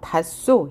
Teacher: 히읗 뒤에 시옷이 오면 히읗은 탈락하고 시옷을 쌍시옷으로 교체해서 발음한다는 것